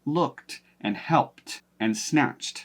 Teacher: If you have a word that ends in ed, but the sound directly before it is an unvoiced or a voiceless consonant sound, like s, k, t, then you will pronounce the d as a t to match that voiceless consonant